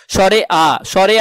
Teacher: বিবৃত মানে দুই ঠোঁটের মাঝখানে ফাঁকা জায়গা বেশি থাকবে। যেমন স্বরে আ, স্বরে আ উচ্চারণ করলে দেখো তোমার দুই ঠোঁটের মাঝখানে ফাঁকা জায়গা বেশি হচ্ছে।